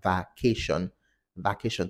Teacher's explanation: the schwa is elongated in such a way that becomes an ah the mouth opens really wide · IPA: va'keʃɒn